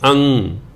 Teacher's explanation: ਅੱਧੇ ਗੱਗੇ ਦੀ ਆਵਾਜ਼ ਮਗਰ ਆਉਂਦੀ ਹੈ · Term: ਟਿੱਪੀ